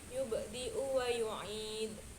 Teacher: ada bacaan yub itu dibaca qalqalah sugro yang artinya tipis